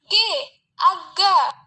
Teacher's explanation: cara artikulasinya itu plosit atau letupan, dan tempat artikulasinya itu dorsovelar. Dorsovelar itu punggung lidah mendekati velum.